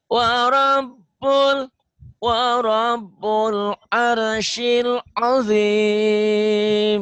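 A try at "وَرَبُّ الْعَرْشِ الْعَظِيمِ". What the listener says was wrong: Shinnya mana shinnya? Ayo, shinnya. Arsyil.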